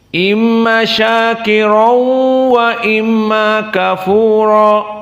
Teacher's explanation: Adapun qiraah Hamzah disebutkan dengan idgham, tanwin masuk kepada waw, namun bi ghairi gunnah.